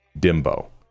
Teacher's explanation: Pronounce dembow as dembow. Stress the second syllable. Bow, which sounds like bow, or the English word dough.